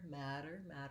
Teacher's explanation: we have first syllable stress in the word matter, and it has the black cat vowel